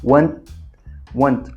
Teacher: come o T, como se a gente quase estivesse indo pronunciar, mas a gente não pronuncia, a gente segura o finalzinho dele